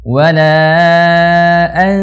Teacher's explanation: bunyi nun mati tanwinnya itu langsung dileburkan, langsung masuk ke huruf yang setelahnya. Jadi mulutnya langsung bersiap-siap posisi huruf setelahnya. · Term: ikhfa